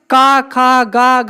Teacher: तो का वर्ग का उच्चारण स्थान क्या होगा, कंठ होगा।